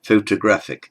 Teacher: in photographic the first o carries what we know as a secondary stress so it's half stressed photographic the main stress is on the a secondary stress is · The main stress is on the A, secondary stress is on the O